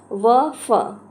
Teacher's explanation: दंतोष्ठ्य मतलब दांत और ओठ से, निचले होंठ और ऊपर के दांतों से